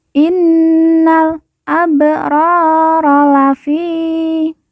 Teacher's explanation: Fi kita baca panjang dua harakat karena di depannya terdapat huruf ya sukun atau ya mati